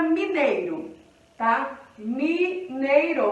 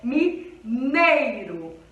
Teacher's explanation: quando o I está acompanhado do E, ele perde um tom. Ele deixa de ser vogal e passa a ser uma semivogal. Por quê? Porque ele não tem o som forte de uma vogal.